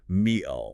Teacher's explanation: Instead of stopping the air behind the teeth, the speaker abruptly closes their vocal cords deep in the throat. >> So you don't release the air at all.